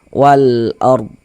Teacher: Sebelumnya ada harakat fathah, maka huruf ro sukunnya dibaca tabkhim, dibaca tebal. Nah, sehingga dengan menaikkan pangkal lidah kita ketika kita mengucapkannya.